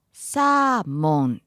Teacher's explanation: So flat and high then dropping. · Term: pitch accent